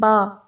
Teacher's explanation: दोनों होंठों के तर हिस्से से